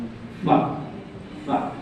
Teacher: Nah, di bibir yang pertama huruf fa keluar dari ujung gigi seri atas yang menyentuh bibir bawah. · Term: huruf syafawi